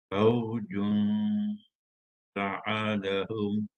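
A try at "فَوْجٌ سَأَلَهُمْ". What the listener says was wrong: Yang itu masuk hidung je. Yang itu masuk hidung tu kedua-duanya. Haji kena bunyikan ju tu dulu kat mulut.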